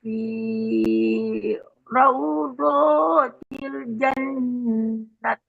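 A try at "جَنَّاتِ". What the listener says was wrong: Panjangkan jannat.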